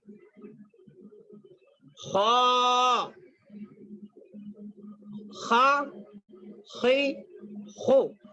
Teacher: حلق کے منہ کی جانب والے حصے سے ادا ہوتا ہے. حلق میں یعنی اوپر سے.